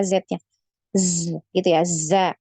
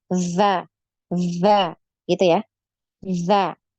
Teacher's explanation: bunyinya itu sama seperti huruf z ya cuman tidak setajam huruf Zai kalau huruf Zai kan tajam ya Z nya Z gitu ya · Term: huruf dalal